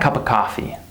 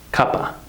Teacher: The word of becomes reduced to the schwa sound.